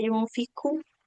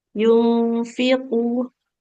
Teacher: kofnya hati-hati jangan mengalirkan nafas